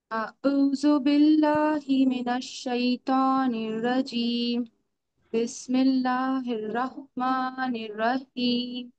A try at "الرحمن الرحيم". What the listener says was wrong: رحمان اور رحیم دونوں میں را کے ساتھ ہا کو ملانا ہے ہمیں. رحمان الرحیم.